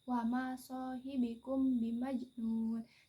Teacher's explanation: ikfah syafawi itu yaitu dibaca dengan bacaan samar-samar di bibir dan didengungkan hukum bacaan dari ikfaz syafawi itu mim sukun bertemu dengan huruf